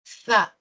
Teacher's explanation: Es el sonido que se articula con la punta de la lengua entre los dientes, sin morderlo, sino soltando el aire. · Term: fricativa interdental